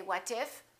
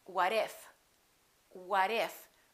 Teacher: when the T is between two vowels it becomes a fast D